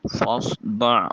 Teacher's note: فاصدع، فا کی ادائیگی کے وقت سامنے والے دو دانتوں کا کنارہ نیچے والے ہونٹ کے شکم سے ملے تو فا ادا ہوتا ہے۔ صاد حرف مستعلیہ ہے، موٹا اور پر کر کے ادا کریں گے۔ دع میں عین کو وسط حلق سے نکالیے۔